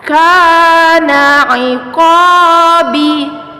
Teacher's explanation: ka di sini fathah bertemu alif dipanjangkan 2 harokat. Fathah bertemu alif dipanjangkan 2 harokat.